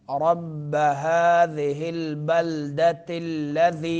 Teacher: रब्ब में रा पुर पढ़ेंगे